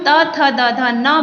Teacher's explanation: जब हम त थ द ध न बोलते हैं तो हमारी जीभ दांतों से टकराती है, इसीलिए इसे कहा जाता है दंत वर्ण।